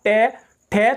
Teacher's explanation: Category में रखा जाता है। नेक्स्ट आता है आपका ट वर्ग। ये बोला जाता है मूर्धा से, जो मिडिल वाला भाग जो ऊपर का होता है, जहां जीभ बीच में टच करती है